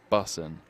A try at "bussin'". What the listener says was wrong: I don't think you pronounce the G, so bussin'. Bussin'.